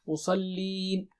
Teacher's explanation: صاد بہت موٹا اور اونچا ہے